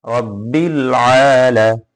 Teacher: একলিপ টান হবে আইনে, রব্বিল আলা।